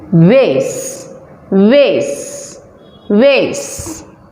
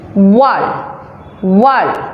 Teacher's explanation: Your down lip is going inside, lower lip is going inside. But in the W, W, you join together upper and lower lips.